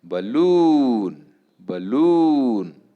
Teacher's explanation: The same word could be used as noun and verb and hence the stress doesn't change, the stress remains as it is on the second syllable.